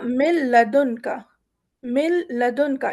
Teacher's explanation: نون پہ ایک جزم بھی لگا ہوا ہے، اس کے باوجود کیونکہ آگے والے حرف پہ تشدید ہے تو ہم اس نون کو نہ پڑھتے ہوئے آگے بڑھ جائیں گے